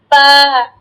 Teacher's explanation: দুই ঠোঁটটা তা একদম সুন্দর করে লাগাবেন, দুই ঠোঁট সুন্দর করে লাগিয়ে বা